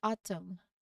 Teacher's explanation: Our first word here is autumn, so you can see the mn at the end where we say when we say it, the n is silent and the word ends with the m sound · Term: silent letter N